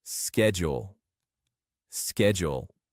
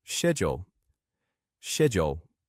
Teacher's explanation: The American pronunciation is usually with a sk sound, like schedule, schedule. But the British pronunciation often uses a sh sound, like schedule, schedule.